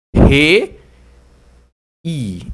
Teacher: aqui uma vogal e tem uma semivogal então ó re I Então você percebe que o i o som já é um pouquinho mais fraquinho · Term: ditongo decrescente